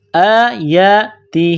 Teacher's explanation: آیاتہ، حمزہ کے اوپر کڑا زبر ہے، یا کے اوپر کڑا زبر ہے، ایک الف کی لمٹ میں کھینچنا ہے. آیاتہ، تا کو باریک کرنا ہے، ہا کے نیچے زیر ہے، ایک الف کے برابر کھینچنا ہے